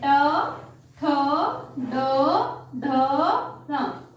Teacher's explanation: ट वर्ग का उच्चारण स्थान है मुर्धा